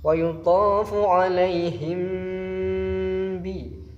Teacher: Ini dinamakan hukum bacaan ikhfa syafawi. Dibaca didengungkan di daerah bibir